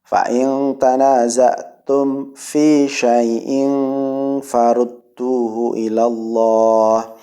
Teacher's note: Mim mati ketemu fa ya. Mim mati ketemu fa, hukum bacaannya izhar syafawi. Mim dibaca jelas.